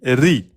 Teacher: Quand elle porte kasra, elle est amincie.